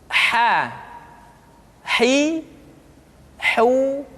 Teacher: huruf H dikeluarkan dari tengah-tengah tenggorokan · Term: huruf ha